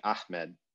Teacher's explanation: often called the emphatic H, or the pharyngeal H in things like Ahmed, the name.